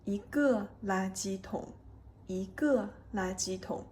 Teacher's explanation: E becomes the second tone here